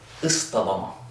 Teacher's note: we take that 'taa,' and we turn it into a 'Taah,' to reflect the sound of the 'Saad.'